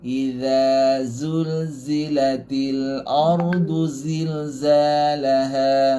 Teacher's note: Mula-mula tak ada sofir. Iza. Lepas tu zulzilatil ardu zilzalaha. Yang belakang 4 lagi tu semua huruf zai. Ada sofir.